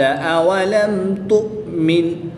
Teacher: میم ساکن کو خوب ظاہر کر کے پڑھیں گے. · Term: اظہار شفوی